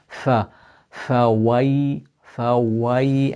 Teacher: Fa, first of all, is from the central incisors touching the wet part of the bottom lip.